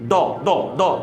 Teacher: ٹیڑھا حصہ جو ہوتا ہے, سائڈ والا حصہ جو ہوتا ہے, رائٹ سائڈ کی داڑیں ہیں اوپر والی, اور وہاں پہ زبان کی دائیں جانب کی جو کروٹ ہے اس کو پختگی کے ساتھ لگا کے پھر داد ادا کرنا ہے